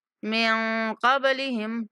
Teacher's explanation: نون پر اخفا کریں گے اور با پر کلکلا کریں گے۔